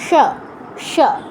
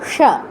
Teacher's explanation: জিহ্বাটা ভাঁজ হবে, ভাঁজ হয়ে পেছনের দিকে গিয়ে সামনের দিকে স্লাইড হয়ে আসবে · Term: মূর্ধন্য স